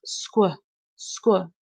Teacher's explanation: my lips are rounded and my tongue is at the bottom of my mouth